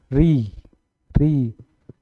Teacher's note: री, इसमें दांतों का प्रयोग किया जा रहा है, ठीक है, दांतों के पास पास, ठीक है, दांतों को री, री, ठीक है।